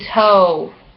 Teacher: O, dot, dot, mid, back, rounded, tense, like in toe